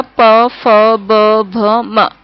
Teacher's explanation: इनको बोलते समय होठ ऊपर नीचे के होठ आपस में टकराते, इनका उच्चारण स्थान ओष्ठ है।